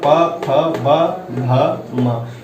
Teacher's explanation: प वर्ग में प, फ, ब, भ, म इसे ओष्ठ से बोले जाता है